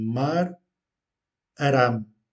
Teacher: Remarquez que je roule légèrement le R.